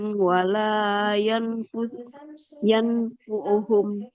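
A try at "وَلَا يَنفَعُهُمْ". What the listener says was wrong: Bukan yang fu'uhum ya. Yang fa'uhum. Coba diulang.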